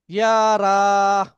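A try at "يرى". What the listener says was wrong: রতে টান হবে, ইয়াটা আরো দ্রুত বলতে হবে। রটা রা হবে না, র।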